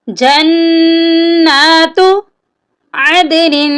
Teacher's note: جنات، یہاں پر بھی نون مشدد ہے، نون پہ ہم غنہ کریں گے